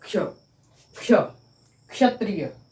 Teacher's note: मूर्धन्य, जो मूर्धा से बोला जाता है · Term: मूर्धन्य सकार